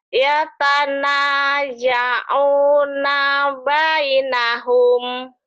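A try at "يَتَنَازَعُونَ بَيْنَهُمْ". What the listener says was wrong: Setahu saya ini bukan ya ya. Ini za.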